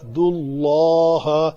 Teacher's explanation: اللہ اس میں جلالہ کا لام جو ہے پر اس لیے کیا اس کا ماقبل پیش کے ساتھ ہے